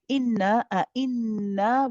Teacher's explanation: making sure that both hamzas are sharp